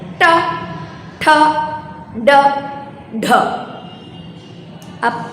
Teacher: आपकी जीभ जो है वो थोड़ा बेलनाकार में मुड़ जाती है, पीछे की तरफ झुकती है और उसके बाद एक झटके से बाहर आती है।